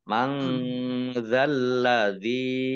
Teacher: nun sukun bertemu dengan huruf zal bacaan ikhfa dibaca samar-samar. Yang lamnya dibaca double ada tasdidnya.